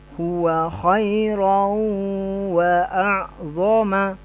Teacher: Khairau dia masuk ke huruf waw langsung tapi secara dengung.